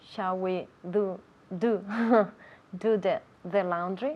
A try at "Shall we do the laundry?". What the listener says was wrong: Yeah, now be careful with that TH. Do, the D, your tongue is inside and against the roof of your mouth. D, do. Then with the TH, the tongue comes out. Do the laundry.